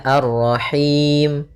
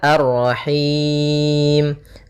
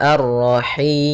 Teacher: boleh kita panjangkan hi-nya karena bertemu dengan huruf mad, boleh 2, boleh 4, boleh 6. Maka kalau 2 misalnya Ar-Rahim, kalau 4 Ar-Rahim, kalau 6 Ar-Rahim. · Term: mad arid lis sukun